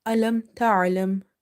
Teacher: Ain is from the middle of the throat and it's a bit squeezing sound, and you have to pronounce it from exactly the middle part of your throat.